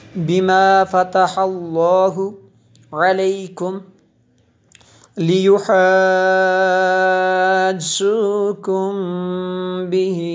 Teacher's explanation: میم ساکن کے بعد با ہے، یہاں پہ بھی اخفاء شفوی ہے